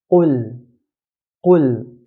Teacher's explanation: So Arabs will pronounce qaf in a heavy manner. · Qaf, the articulation point of this letter is right at the back of the tongue near the throat.